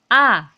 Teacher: taawud itu adalah A Ya A jadi itu dia bersuara besar Dia berasal atau keluarnya itu atau makhorijul huruf yaitu dari pangkal tenggorokan jadi suaranya besar